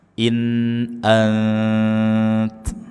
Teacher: Antum, nun sukun bertemu dengan ta, ikhfa, nun sukun kita baca dengan samar dan ujung lidah sudah menempel dengan gusi atas. In ant, bukan autum atau itu belum nempel kemana-mana.